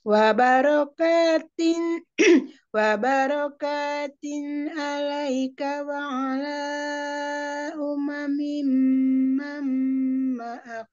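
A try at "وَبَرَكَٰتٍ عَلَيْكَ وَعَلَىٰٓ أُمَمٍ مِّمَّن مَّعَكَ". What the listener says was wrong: Mim, mim, mim. Dua-duanya mim, mim. Kasroh ya dua-duanya. Mim, mim. Mam, mam. Tadi tinnya, idharnya sudah bagus yang awal.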